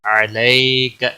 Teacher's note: السلام علیک، علیک، یالین ہے، تھوڑا نرمی کے ساتھ کھینچ کر ادا کریں گے، عین کا خاص خیال رکھنا ہے، وسط حلق والا